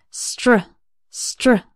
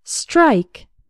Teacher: STR almost sounds like there's a CH sound in the middle, like str, str.